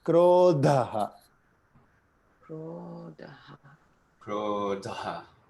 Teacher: Here the dha sound, the dh sound is with aspiration. So you got to get the air there.